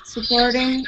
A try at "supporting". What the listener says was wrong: very good job with your T Sounds here changing that to a D sound saying supporting good job